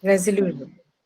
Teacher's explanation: the second last one, that's lu, is going to take the stress because of the presence of the suffix shin